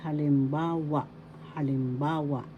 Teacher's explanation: the third syllable has the accent so you pronounce this as Halimbawa